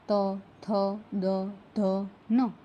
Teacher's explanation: દંત્ય જીભનો આગળનો ભાગ ઉપરના દાંતને સ્પર્શ કરીને હવાને રોકે છે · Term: દંત્ય વ્યંજનો